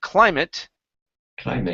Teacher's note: in most cases when it is a noun and you have an at at the end the at is pronounced it instead of eight